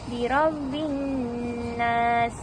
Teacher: Dekat ra dibaca secara tafkhim kerana ra tu berbaris fathah, jadi dibaca tebal. Tebal yang dimasukkan adalah pangkal lidah yang terangkat.